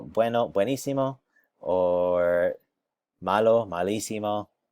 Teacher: You'll notice, though, that it always has to have this little accent here so that we know that the accent lands on the isimo. Otherwise, it naturally lands here on emo, which we don't want to be emo.